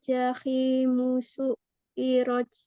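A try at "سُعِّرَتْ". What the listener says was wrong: Ya, sinnya dapat, tapi ainnya nanti latihan ya.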